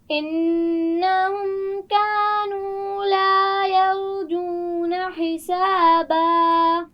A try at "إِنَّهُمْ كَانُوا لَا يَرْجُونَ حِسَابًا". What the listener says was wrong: یرجون، را کو موٹا پڑھنا ہے. دوبارہ پڑھیے. یرجون، را کے مخرج کا خیال رکھیے، صرف اسی لفظ کو پڑھیے.